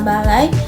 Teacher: posisinya lebih rendah lalu bergerak naik ke bunyi kedua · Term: diftong naik